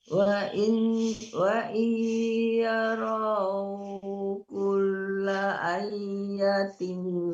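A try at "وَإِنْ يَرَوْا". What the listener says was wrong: Jangan ai, nggak ada tasdidnya. A-nya panjang, jangan ai ya. Kalau ai tasdid ya-nya. Wa in yarau kulla ayatillah.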